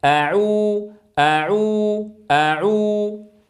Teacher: بعد العين اتت الواو المديه يستمر ضم الشفتين عندها